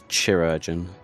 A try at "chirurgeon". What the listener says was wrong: I'm pretty sure it's pronounced with a hard K, as opposed to a soft K. Key. No, I'm saying CHI. That's usually pronounced key.